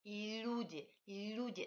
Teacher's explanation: L russe n'est pas I alvéolaire, c'est pas L comme le français. L russe est dental, on touche les dents. Et il faut palataliser ce L.